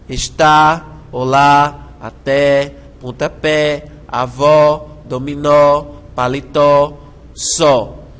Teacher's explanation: com acento agudo está Olá até pontapé avó dominó palitó só são vogais tônicas abertas a e o seguidas ou não de S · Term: oxítonas